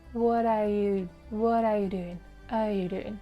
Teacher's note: It's actually the main verb, so we also stress. And are is an auxiliary plus you, we don't stress.